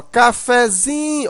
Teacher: Mas quando você usa um derivado dela, por exemplo, cafezinho, a sílaba mais forte agora não é mais o fé, e sim o zinho. Chamando a palavra, ó, cafezinho, observa que o zin, né, você demora mais. · o fé, ainda é pronunciado um pouco forte. Não tão forte como o zin, mas também não tão fraco como o k. Ela é um intermediário. · Mas no cafezinho, a sílaba mais forte é o zin. Mas observa que o café de cafezinho, o fé, ainda é pronunciado um pouco forte. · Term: sílaba tônica, subtônica